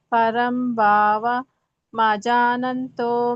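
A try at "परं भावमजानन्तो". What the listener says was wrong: 3ನೇ ಲೈನಲ್ಲಿ ಪರಂ ಭಾವಂ ಅಜಾನಂತೋ, ಭಾವಂ ಬೇರೆ ಅಜಾನಂತೋ ಬೇರೆ, ಅಲ್ಲಿ ಮಧ್ಯದಲ್ಲಿ ಅ ಹಚ್ಬೇಕಷ್ಟೆ. ಭಾವಂ ಅಜಾನಂತೋ.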